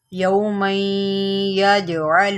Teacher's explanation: نہیں پڑھ دینا، ٹھیک ہے، اس کو پڑھیں گے یوما یج، جیم جو ہے حروف قلقلہ میں سے ہے اور اس کے اوپر جزم ہے، یہاں پر آپ قلقلہ کریں گے یعنی کہ جیم کو ہلائیں گے